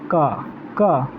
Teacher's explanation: एक व्यंजन वर्ण है। आप क का उच्चारण करिएगा तो क में आ का ध्वनि आ रहा है